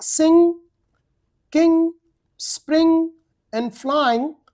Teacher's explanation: It is pronounced as a phonetic symbol in English like N since it is a nasal sound so the sound must come through your nose N. The position of our mouth is exactly like C and G but this time the air comes through the nose rather than through the mouth.